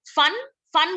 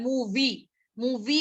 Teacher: लेबियोडेंटल होता है जो यहाँ पे अपर टीथ एंड लोअर लिप